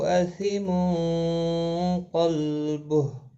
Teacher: تنوین کے بعد حروف اخفا کا قاف ہے، اخفا حقیقی ہوگا، گنہ کے ساتھ پڑھیں گے